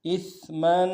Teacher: حمزہ کو سا کے ساتھ ملائیں گے، سا کی سیٹی باریک ہوگی